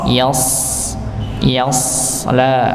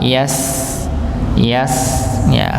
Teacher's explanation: SH dibaca te tebal sedangkan Sin dibaca tipis